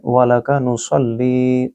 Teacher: सल्ली को सौद के ज़रिए पढ़ना है, सीन नहीं पढ़ना, आपने सल करना है, सल नहीं पढ़ना, और ली को लंबा करेंगे क्योंकि यहाँ या मद है।